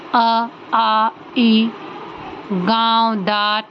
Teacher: ऐसे स्वर जिनका उच्चारण करने से नाक और मुख दोनों से हवा निकलती है या हम दोनों की सहायता से इनका उच्चारण करते हैं। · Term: अनुनासिक स्वर